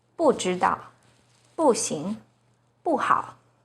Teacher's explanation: When 不 is followed by a non-fourth tone, which are the first, second, and third tones, it's pronounced as the fourth tone